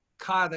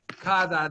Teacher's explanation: it's a TH, soft TH sound, but it's a D in Spanish